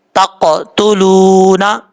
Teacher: لام کے بعد واو ہے، واو مدہ، ایک الف کی مقدار لمبا کر کے پڑھا جائے گا